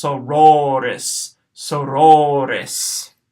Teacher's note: The second word here has a short O in the first syllable and a long O in the second one